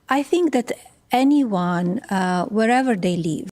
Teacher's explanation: she kind of lost the th. She said they instead of they.